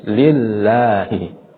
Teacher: Jadi lam di situ tidak dibaca tebal, tetapi dibaca tipis.